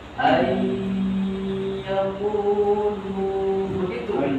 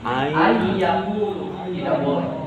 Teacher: Karena di sini ada guna, harus ada dengung Bapak. Berarti Bapak harus ditahan sambil berdengung.